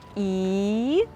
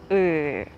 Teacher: якщо передня частина язика тобто кінчик активний ми творимо звук і Ну а трошки нижче глибше звук и